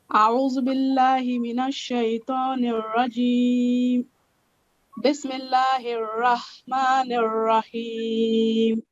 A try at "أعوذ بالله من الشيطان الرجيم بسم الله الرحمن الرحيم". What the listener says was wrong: Just one thing. Alif and ayn sound, they should be differentiated. So alif and ayn sound are different. Okay, so there should be a difference.